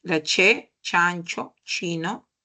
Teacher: La che, chancho, chino, ¿no? Es una palatal, ¿sí? Sorda, según el punto de articulación palatal. Según el modo es una fricada.